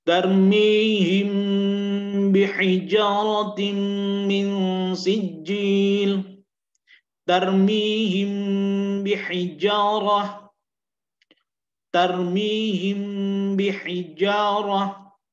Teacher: mim sukun bertemu dengan ba, dan bacaannya itu agak ditahan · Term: al-ikhfa'u syafawi